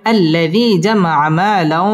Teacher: টেনে পড়তে হবে লাও ইদগামে বা গুন্না তানবিনের বামে ওয়াও আসছে ওয়াও ইদগামে বা গুন্নার হরফ গুন্না সহ মিলিয়ে পড়তে হবে